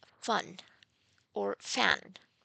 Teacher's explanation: So, regarding the manner of articulation, this is a fricative sound because it's a sound in the production of which the articulators come closer and the air escapes through a narrow passage causing or making a hissing sound. So, the manner of articulation is fricative. · there is no vibration of vocal cords. This is why the sound is called voiceless labiodental fricative